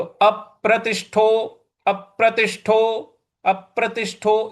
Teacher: यहां त के बाद जो षटकोण वाला श है उस पर भी हमको बल लगाना है।